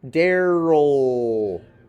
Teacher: I'm going to do mine as a vocalic L, where there's no clear schwa that is separate from the L sound.